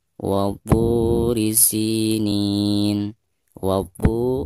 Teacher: Wa-turi adalah mad thabi'i. Karena terdapat vokal dammah pada tho yang diikuti oleh waw sukun. Dibaca dua harakat.